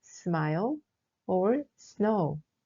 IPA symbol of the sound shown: s